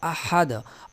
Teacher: ہا یہ وسط حلق سے ادا ہونے والا ہا ہے